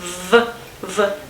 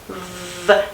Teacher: this consonant is a fricative one, and v, labiodental, right? As opposed to wail.